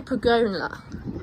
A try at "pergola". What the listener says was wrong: There's no N.